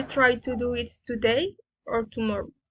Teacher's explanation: Alternative questions, raising and falling intonation.